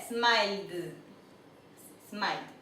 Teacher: Vemos que él termina en un sonido fuerte, así que la ed se pronuncia como una D